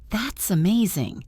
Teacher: your tone rises with excitement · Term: rising tone